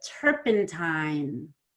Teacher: you need to spend more time on the I before the N